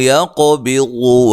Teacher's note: قاف کو موٹا اور قاف کو ہلانا ہے، قلقلہ کرنا ہے